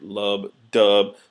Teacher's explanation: syllables so love dub you can hear it love dub so the dub part is the stress part of the line whereas the love part is the unstressed or unaccented portion